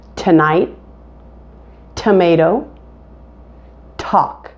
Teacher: Are you feeling that puff of air as you're saying each of those words that begin with T? Now keep doing that until you can comfortably produce a small puff of air with the T sound. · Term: hard T